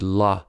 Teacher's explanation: The liquid la is also an alveolar consonant. The tip of the tongue touches the ridge, but the sides of the tongue do not touch anything, so air flows out around the sides of the tongue.